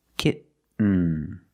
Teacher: You do the stop T, kit. You don't release, and then you fall to an N. Kitten. When you make the stop T, the tongue is up, almost in the N position, so you don't have to change much.